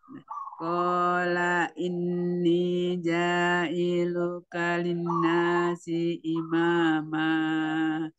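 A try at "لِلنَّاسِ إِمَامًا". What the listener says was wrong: Ya, nun tasydidnya jangan lupa ditahan dulu. Linnasi imama.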